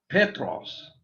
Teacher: notice the accent on the first syllable